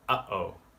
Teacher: you probably know about the little catch in the word uh-oh. That's a glottal stop.